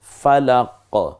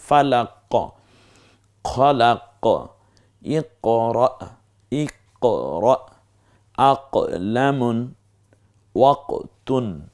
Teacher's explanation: জিহ্বার গোড়া থেকে একটু লাফিয়ে ওঠার মতো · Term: কফ